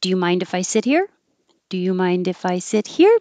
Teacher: because it's a yes no question it goes up at the end